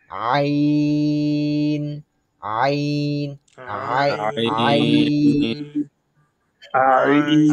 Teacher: হলকের মধ্যখান বা কণ্ঠনালীর মধ্যখান। আমাদের এক কথায় গলার মধ্যখান থেকে এই আইনটা বের হবে।